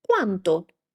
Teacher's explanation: can you hear I'm raising a little bit my intonation? Like I'm not saying quanto, I'm saying quanto.